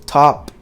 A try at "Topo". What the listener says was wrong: You said top though. because there's an O there.